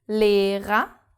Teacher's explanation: The first R is pronounced because it starts the second syllable. And the second R is not pronounced because it's the last letter of the word.